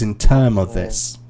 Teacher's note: you were using the expression in terms of this, but I wasn't hearing the S. So it was in term of this.